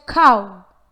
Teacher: It has the vowel ending ow but not W.